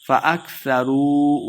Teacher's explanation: فَأَكْثَرُوا واو مد ہے دو حرکات لمبا کر کے پڑھیں گے